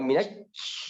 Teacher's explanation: Tasydid, jadi minash. Tahan di huruf shin, jangan kuat.